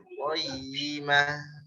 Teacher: Ada tasydid ya-nya ditekan sedikit.